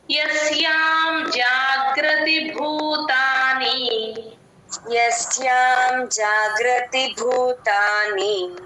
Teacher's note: ఇక్కడ గ కింద రకారం ఉంటుంది పైన ఉండదు అది గమనించుకోండి జాగ్రతి భూతాని భూతానిలో భూ కి మహాప్రాణం ఉంది